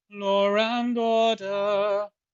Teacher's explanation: And the next word also starts in a vowel. And because there is no consonant, our tongue just glides to the next vowel unopposed, and we creating approximants in the process